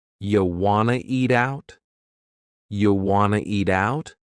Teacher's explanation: we have reduced want to become wanna. This is a common reduction in English.